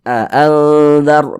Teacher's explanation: Maka nun sukun yang di depannya huruf dzal, karena huruf dzal ini huruf ikhfa hakiki awsat, maka ikhfa hakiki ya, cara membaca ikhfa itu dengan cara disamarkan, kemudian juga dia didengungkan · Kita dengungkan, jadi suaranya itu kita tahan, kita panjangkan sebentar.